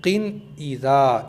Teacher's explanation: जो नून छुपा है उसको अपने मखर से अदा करना है नून जबान की नोक ऊपर के मसूड़ों से मिलकर अदा होता है · बगैर गुन्ने के पढ़ेंगे यानी जब किन को पढ़ेंगे तो यहां पर गुन्ना नहीं करना है · بغیر غننے کے پڑھیں گے، یعنی جب قن کو پڑھیں گے تو یہاں پر غنہ نہیں کرنا ہے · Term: नून जाहिर, इजहार, اظہار